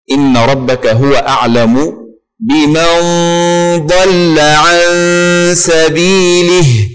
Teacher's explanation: بمن ضل، اللام هنا مرققة وليست مفخمة. إن ربك هو أعلم بمن ضل عن سبيله، ضل، اللام مرققة، ضل بمن ضل.